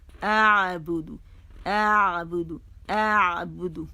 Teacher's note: عین جہاں سے وسط الحلق سے ادا ہوگا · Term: عین کا مخرج